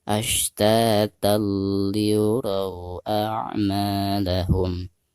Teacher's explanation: suara tanwin yang ada di atas ta tersebut itu harus langsung diidghamkan ke huruf lam ya. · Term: idgham bila gunah